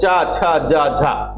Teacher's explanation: जो छूने का समय है तो वो अपेक्षाकृत अन्य वर्णों की अपेक्षा कम होता है, लेकिन घर्षण ज्यादा होता है, संघर्ष ज्यादा होता है। इस कारण से इनको स्पर्श संघर्षी कहते हैं।